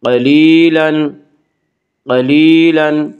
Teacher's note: یا مدہ وہ یا جو ساکن ہو اور اس سے پہلے زیر ہو، یا مدہ کو 1 الف کے برابر کھینچ کر پڑھیں گے